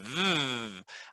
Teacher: And then v, I want to emphasize that it vibrates and that it's very different from b. So we're emphasizing the thing about the sound that is the most different, which is v has a vibration. So and you can vibrate forever, but you can't make the b sound forever.